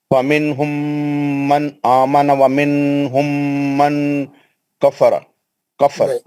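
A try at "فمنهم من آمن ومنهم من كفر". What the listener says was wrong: नहीं, नहीं कर रहे ना आप, आखिरी का इख्फा नहीं कर रहे ना आखिरी में आप, क्योंकि आप दो जगह गलतियां कर रहे हैं। एक तो मीम के इजहार को खींच दे रहे हैं और इख्फा नहीं कर रहे।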